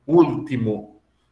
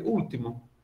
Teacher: a minha pronúncia do L, ela é muito, muito fraquinha.